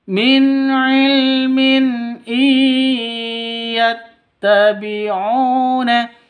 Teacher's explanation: Non mati bertemu dengan ya, cara bacanya masuk ke ya disertai dengung 2 ketukan. Idgham bigunnah.